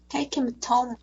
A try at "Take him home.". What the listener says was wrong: Нет, home нормально. H не произносится настолько вот в служебных. His, him, и have.